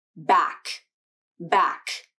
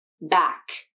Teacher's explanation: soft palate this can happen in a word like back back did you hear the sound at the end that was made when my tongue released from the back of my mouth and the airflow continued to come out back however the k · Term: k consonant